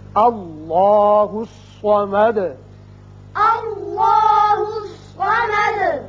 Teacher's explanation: اب دال کے اوپر پیش ہے، آیت ختم ہونے کی وجہ ساکن کریں گے اور سکون کی وجہ سے صفت قلقلہ ادا ہوگی · الف پر زبر ہے لہذا اس میں اللہ کا لام پر کر کے پڑھا جائے گا. اسی طرح صاد حروف مستعلیہ میں سے ہے، یہ پر ہوگا.